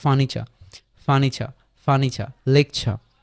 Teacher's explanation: লেকচারে কিন্তু পড়ছি এই জিনিসটা যেই উচ্চারিত হয় না তাহলে ফার্নিচার ফার্নিচার শেষে আরটা আস্তে করে ছেড়ে দিব